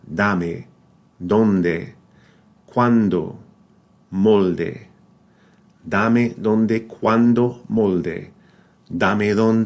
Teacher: the tip of the tongue touches the upper part of the top teeth rather than the ridge behind them which we do in English